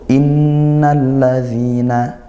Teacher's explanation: nun bertasydid ghunah dibaca dengung